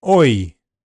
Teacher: Oi is a diphthong vowel sound that starts in a near-open back-rounded position, O, and moves towards a front-close mid position, E. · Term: diff thong vowel sound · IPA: /ɔɪ/